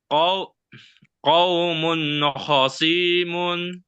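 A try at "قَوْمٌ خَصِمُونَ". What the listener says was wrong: Suinya pendek. Ini enggak ada ya-nya ya. Ini bukan ya ini. Qaumun khasimun.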